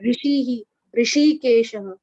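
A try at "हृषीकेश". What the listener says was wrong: That Ri is not it is not the correct pronunciation. Hr. Hrishikeshaha.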